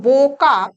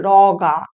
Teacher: ঠিক একইভাবে রোগা, র যুক্ত ও যুক্ত গ যুক্ত আ হয়ে দাঁড়াচ্ছে র যুক্ত অ যুক্ত গ যুক্ত আ। ফলে ডাইসিলেবিক শব্দে পদের গোড়ায় বা শব্দের গোড়ায় যে ও, সেটা পদ বা শব্দের শেষে আকারের প্রভাবে অ ধ্বনিতে পরিণত হচ্ছে।